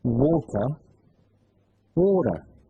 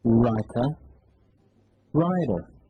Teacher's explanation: În engleza americană, T și D, care se află între vocale, se pronunță aproape identic cu D.